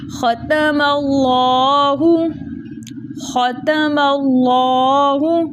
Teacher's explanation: ختم اللہ، ختم اللہ، خا کو ہم نے موٹا پڑھا، ٹھیک ہے، منہ بھر کے، تا کو باریک پڑھا، ماللہ موٹا پڑھا، میم کو باریک رکھتے ہوئے جلدی سے لام کے ساتھ ملایا